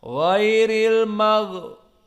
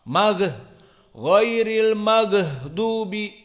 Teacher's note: Di sini tidak boleh gha-nya keluar nafas. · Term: rokhawah